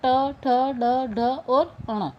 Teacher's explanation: इस स्थान से उच्चारित वर्ण मूर्धन्य कहे जाते हैं। इन वर्णों का उच्चारण करते समय जिह्वा ऊपर के दांतों के साथ ऊपर खुरदरे हिस्से मूर्धा का स्पर्श करती हैं।